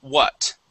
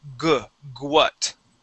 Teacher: the trick with this word is to start off with an oo sound